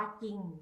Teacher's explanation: ออกเสียงพยัญชนะตัวหน้าเท่านั้นไม่ออกเสียงรอเรือควบ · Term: คําควบกล้ําไม่แท้